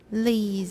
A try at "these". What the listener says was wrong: Not Lees. That's another Taiwan English problem. 字开头的词首的那个V, 台词英语常念L, Lees, Lees. 第一个是吐舌头, 大概半公分在外面. 然后呢, produce voicing. Everybody, V. 加Es, Don't say Lees. That's totally Taiwan English. 英文没有这样啊.